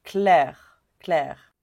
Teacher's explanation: on va pas prononcer le E final